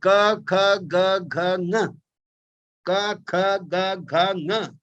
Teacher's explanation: क voiceless stop, kha aspirated stop, ga voiced stop, gha voiced aspirated stop, nga voiced aspirated nasal stop.